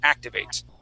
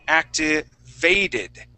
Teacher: activate Okay now if I then change that to activated okay that second T will then assume a D sound because I added the e d ending